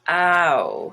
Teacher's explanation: i want to make brown my tongue is going to be further back and also going to be changing uh or moving you could say ow so some of these vowels are changing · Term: diphthongs